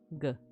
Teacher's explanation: This is G pronounced as a stop like the English G in gun